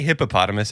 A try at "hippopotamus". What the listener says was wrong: Oh, the extra syllable.